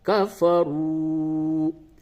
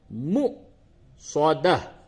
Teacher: واو کے اوپر حمزہ ہے اور حمزہ کے اوپر جزم ہو تو ایسی صورت میں اس واو پہ جھٹکے کے ساتھ پڑھتے ہیں